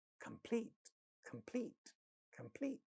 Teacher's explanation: has pa sound at the initial position of the stressed syllable, which is the second syllable